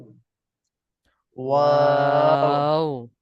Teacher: দুই ঠোঁট গোল করিয়া পাতলা আওয়াজে ওয়াও